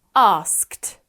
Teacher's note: Ask ends in the unvoiced consonant k. We match unvoiced with unvoiced, so we add the unvoiced t. Asked. That's quite a hard consonant cluster there.